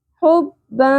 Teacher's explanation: आवाज़ को हमने छुपाया भी, इख्फा भी किया और नाक में ठहराया भी